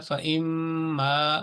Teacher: آپ نے اس کو میم کو تشدید کے ساتھ غنہ کرتے ہوئے اس کو پڑھنا ہے، اور الف کو بھی ادا کرنا ہے.